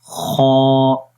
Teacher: آپ اس امیج کے اندر بھی دیکھ سکتے ہیں کہ یہ وہ پوائنٹ ہے کہ جہاں سے خا کی آواز یعنی کہ گلے کے سب سے اوپر والا حصہ جو منہ کی طرف ہے وہاں سے ہم پڑھیں گے اس کو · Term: خا کا مخرج